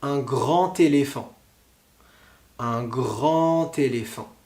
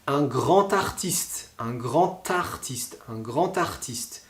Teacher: le D, on le prononcera donc T